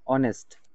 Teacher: H silent আমরা vowel sound এখানে শুনতে পাচ্ছি